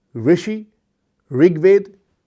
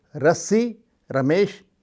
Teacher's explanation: ऋ ध्वनि स्वर ध्वनि है। इसमें घर्षण नहीं होता। सहज रूप से निकल जाती है।